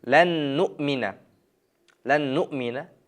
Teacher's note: nun harfini keyingi nun harfiga kirgizamiz, kiritib idg'om bo'lib o'qiymiz